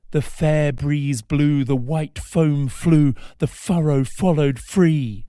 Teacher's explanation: the fricative alliteration of the f sound creates this feeling of great energy